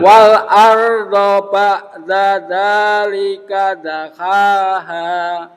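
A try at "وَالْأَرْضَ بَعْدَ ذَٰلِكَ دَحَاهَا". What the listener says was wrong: Ain matinya tengahkan coba. Wal arda ba'da ke tengah. Iya, nanti kalau nggak ke tengah jatuhnya ke hambia. Ba'da dzalika itu hambia. Ba'da dzalika dakhaha.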